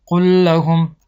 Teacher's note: یعنی همین لام ساکن رو با لام حرکت دار دخول میکنیم، این لام ساکن خوانده نمیشود و این لام حرکت دار با تشدید خوانده میشود. یعنی قل لهم. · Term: ادغام متماثلین